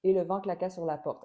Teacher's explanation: j'essaie volontairement d'enlever les accents toniques